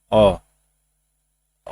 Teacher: जो अ होता है इसका उच्चारण स्थान जो होता है जीभ का मध्य भाग होता है। अ जो होता है ये मध्य भाग हो गया।